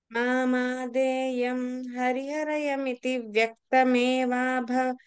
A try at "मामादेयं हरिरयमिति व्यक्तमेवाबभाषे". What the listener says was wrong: You added one alphabet.